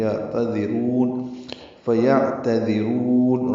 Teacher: را کو پر پڑھیں گے اور لمبا کریں گے